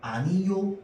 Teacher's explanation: 아니오를요 아니요로 발음하게 되면은 이 요는요 반모음 이 플러스 오이기 때문에 반모음 첨가 현상이라고 한다고